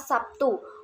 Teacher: Huruf B pada kata Sabtu itu diucapkan sebagai P. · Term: alofon